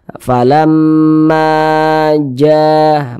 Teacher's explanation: ma dibaca 2 harokat, ja dibaca 2 harokat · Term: mad tabi'i